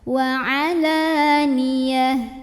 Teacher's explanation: tak marbutah harokat apapun berhentinya jadi ha gede, ha sukun